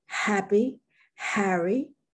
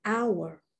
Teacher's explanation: sometimes you pronounce it as in happy, Harry, and other times you don't, as in hour